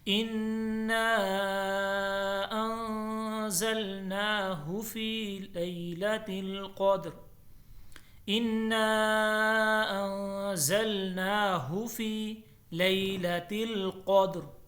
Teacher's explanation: قدر میں را کو پر پڑھا جائے گا، کیوں کہ یہ ماتحت ہے کس کے، قاف کے، دال تو پہلے سے ساکن ہے۔